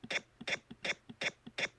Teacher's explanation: it's a stop it's a voiceless stop it's also got this aspiration period